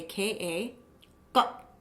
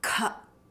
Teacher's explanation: alpa prana, a little air, versus maha prana, a lot of air